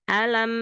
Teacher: Nah di sini ada huruf Ain dialirkan sedikit ya